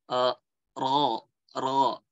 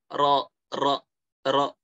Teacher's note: Tapi ro dia bulat. Ro cukup getarannya tuh nggak terlalu banyak getaran gitu. Ro gitu. Bukan ro.